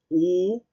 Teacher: en el caso de la U, repito, es cerrada, posterior en cuanto a su serie